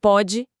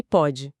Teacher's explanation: E a pronúncia já é diferente, né? O O fechado contra o O aberto.